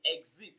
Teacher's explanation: Exit, the stress falls on the first syllable, exit.